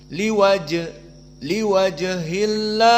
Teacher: Ha asakinah berarti hams lah Ada Ha Dan yang kedua liwaj Jim di sini Sakinah dia adalah Qalqalah asugro maka harus ada Qalqalah